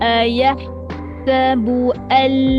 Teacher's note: Pastikan keluar angin yang pedas. Huruf ha.